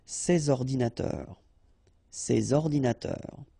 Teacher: So you should make the liaison between S and O